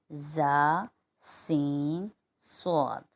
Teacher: جب زبان کی نوک نیچے کے آگے کے 2 دانتوں کی جڑ سے لگے تو 3 حرف ادا ہوں گے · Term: حروف صفیریہ